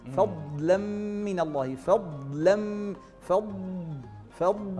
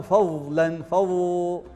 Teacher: فالاستطالة أن يحدث هناك ضغط على الضاد فيستطيل الصوت على حافة اللسان فتخرج هذه الضاد الفصيحة